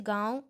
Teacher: अनुनासिक के उच्चारण में नाक से भी मुंह से भी बाहर निकलती है